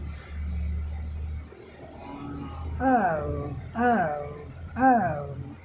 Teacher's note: यह अ से उ की तरफ मूव करता है। औ अ प्लस उ बराबर औ औ औ चलो यहां कोई नई चीजें नहीं है।